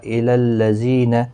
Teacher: زی یا مدہ ہے، ایک الف کی برابر کھینچ کر پڑھیں گے۔